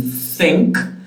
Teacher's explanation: you have a dental fricative